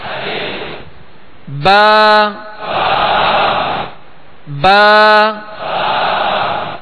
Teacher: یہ با حروف شفویہ میں سے ہے اور دونوں ہونٹوں کے تر حصے سے ادا ہوتا ہے